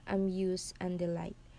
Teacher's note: The first syllable is unstressed. So it is pronounced with a shorter softer sound. The second syllable is stressed. So you place emphasis on it.